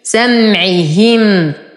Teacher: سمعهم، أتم كسرة العين والهاء ولا أقول سمعه، لا، هي. سمعهم، أصبر على الميم وأعطيها زمن التوسط